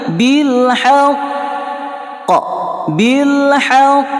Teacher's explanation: Kemudian ada tasydid di atas qaf, huruf qalqalah ini ada tasydid, maka ia menjadi akbar, lebih besar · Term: qalqalah akbar